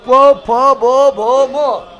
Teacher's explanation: ध्यान, बिना होठ टच किए, बिना होठ टच किए पो फो बो भो मो नहीं बोल सकता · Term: होठ से